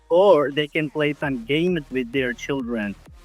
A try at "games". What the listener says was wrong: Games, work a bit on the pronunciation. Games, games. It's not gamers. Listen to this here. Games.